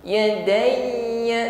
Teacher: sekalipun huruf ya ini ditekan saat mengucapkannya, tetapi bunyi huruf ya-nya tidak boleh putus ya, tidak boleh tertahan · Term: huruf ya yang bertasydid